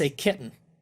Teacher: I didn't pronounce any of the t's there but you still know I'm saying kitten